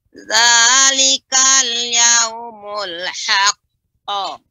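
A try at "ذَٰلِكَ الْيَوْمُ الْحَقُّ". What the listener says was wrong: Lebih dalam lagi Ibu, misalnya lebih dia pengucapannya lebih tebal dan lebih mulut agak sedikit ya, terbuka sedikit. Haqqu ya. Itu haqqu. Qo. Nah, itu terbuka di haqqo.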